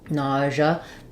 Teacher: So nausea, the first way would be first syllable stress, letters A, U say ah, like in saw · The letter S says the zh sound, so that's kind of like a voiced SH. Sometimes I write that with ZH.